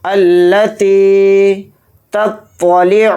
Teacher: تھوڑا کھینچ کر پڑھیں گے، التی تطلع، شروع میں تا ہے، تا کو باریک پڑھیں گے، طوا کو یہاں پر موٹا پڑھیں گے